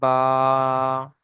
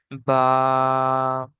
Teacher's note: দুই ঠোটের ভিজে অংশ দিয়ে উচ্চারিত হয় বা